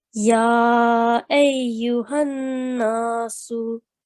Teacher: on this ya mushaddad, you pronounced it with stress. That is correct. And this noon mushaddad, you pronounced it with the sustained nasal sound.